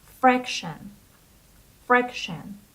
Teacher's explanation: The stress is on the first syllable, so it is fraction.